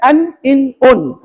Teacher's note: Ujung lidah di tekankan gusi atas. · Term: sebutan nun